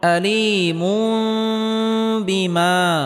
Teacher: আয়দা বুন তানবিনের পরে ইকলাবের হরফ বা আসার কারণে এখানে ইকলাব গুন্নাহ করে পড়তে হবে, অর্থাৎ তানবিনকে ছোট মিম দ্বারা পরিবর্তন করে পড়তে হবে